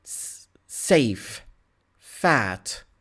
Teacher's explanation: Labiodentals, the upper teeth with the lower lip.